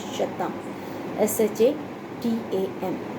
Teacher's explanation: Sanskrit has changed the K to an SH sound